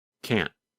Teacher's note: The N sound N lasts longer than in the negative form. In fact, in the negative form, because the tongue and voice stop, there is almost no sound of the letter N.